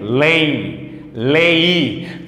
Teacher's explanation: se vocês está escutando esse I tá é sinal de que nós temos então um ditongo decrescente nasal